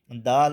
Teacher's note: اور دال، دال اور تا کا مخرج ایک ہے، زبان کی نوک اوپر کے دانتوں کی جڑ کو جب لگے گی زبان تو پھر یہ دال ادا ہوتی ہے